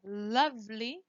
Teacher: the O is pronounced like the central ah